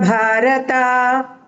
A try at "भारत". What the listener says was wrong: Don't drag the ta. Ta is not dirgha. Bharata.